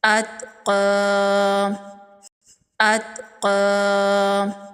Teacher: قاف حروف مستعلیہ میں سے ہے، قاف کو پر پڑھیں گے اور یہاں پر بڑی زبر جو ہے وقف کی صورت میں اس کو کھڑی زبر میں بدل دیں گے اور ایک الف کے برابر کھینچ کے پڑھیں گے۔